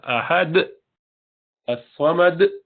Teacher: جھٹکے سے جو بند کیا یہ بھی غلط ہے. اس کو آپ نے قلقلہ کو حمزہ بنا دیا، یہ ٹھیک نہیں ہے، یہ بھی غلط ہے.